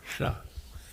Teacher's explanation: this first sibilant is a palatal, so you just smile